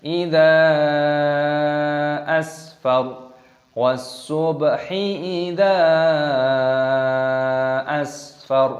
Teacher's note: mad saiz munfasil, dipanjangkan 5 ketukan